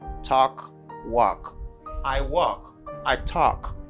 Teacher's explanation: do not pronounce l you see in this word